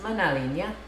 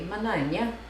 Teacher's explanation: Epenthesis, which means L insertion, or hiatus, which means no consonant, like the mananya versus manalinya.